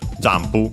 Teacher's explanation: the n is actually pronounced as m because there's the following pu, and so p, a bilabial consonant. So yeah, literally from just like English jump, because it comes from jump.